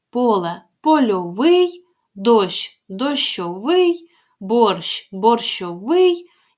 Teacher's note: Але у нас наголос падає в такому прикметнику вже на закінчення